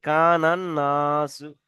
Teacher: নুনের উপর তাসদিদ আছে, তাসদিদ অক্ষর দুবার উচ্চারিত হয়, তাহলে আলিফ লাম বাদ যাবে, গিয়ে পূর্বের অক্ষরের সাথে মিলিতে হবে, তাহলে নুনের সাথে মিলতে হবে। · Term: হরফে শামসি